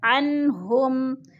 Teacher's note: ظاہر کر کے پڑھیں گے، ناک میں آواز نہیں لے جائیں گے۔ عنہم، ہم میم ساکن کے بعد آگے حروف ہلکی میں سے حمزہ آ گیا ہے تو ادھر اظہار شفوی۔